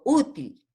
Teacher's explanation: Hago el acento, la acentuación en la U